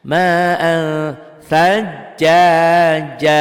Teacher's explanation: Ma'an tuh ditulisnya ma'an, dibacanya ada angnya dan ditahan. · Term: ikhfa